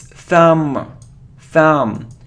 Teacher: It isn't thumb, or it isn't thumb, it's thumb, thumb. So we don't pronounce B, thumb, okay?